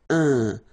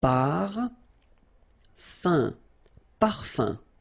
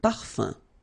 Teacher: So remember, even if you've got this like that, phonetically it's exactly the same thing as if you would have un. So it's nasal and it's un. So it really goes in your nose. You don't pronounce the M at all.